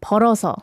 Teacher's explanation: like poro ah okay yeah but it should be like poro like you transfer the last ending sound to the next syllable